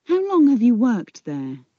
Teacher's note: Long and worked are stressed. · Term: sentence stress